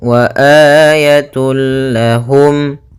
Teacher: idgham Bil gunah yaitu huruf lam di sini maka cara membacanya masukkan tanwinnya kepada huruf lam tanpa ditahan gunah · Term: Idgham bila ghunah, idgham bila gunnah